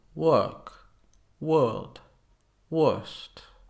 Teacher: in British English it is common to not pronounce the r after vowels